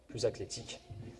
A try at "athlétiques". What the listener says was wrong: Athlétique avec un T. Non, t'as dit athlétique avec un C.